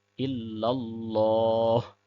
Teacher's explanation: پھر اللہ کا لام موٹا ہوگا، ہا کو بھی آخر میں ظاہر کریں گے